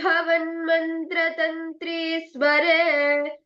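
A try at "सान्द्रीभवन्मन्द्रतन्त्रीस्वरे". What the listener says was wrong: Mandra Tantri Sware. Could you pronounce that again? It's not mantra.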